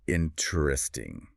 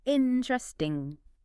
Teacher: That internal E sound goes, think of it like swallowing that syllable entirely, or just sliding right over the T.